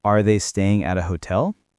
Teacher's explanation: use a rising tone at the end of your question. It makes it sound more natural and helps people know you're asking something.